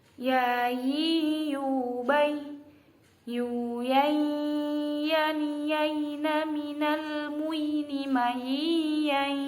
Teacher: Ketika membaca ya di tengah lidah ke atas dan ujungnya ke bawah supaya tidak terjadi za, tapi ya, seperti itu. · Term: huruf ya